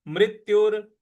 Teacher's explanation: मृ के बाद जो आधा त है उस पर हमको आघात देना है